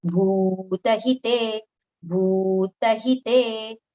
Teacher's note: Bhu long, tahi with a short pronunciation, again te long.